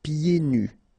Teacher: so you don't hear the D